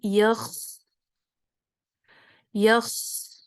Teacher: میری سانس جاری ہے، آواز بھی جاری ہے اور سانس بھی جاری ہے، لہٰذا ہمس بھی ہے اور اس میں رخاوہ بھی ہے۔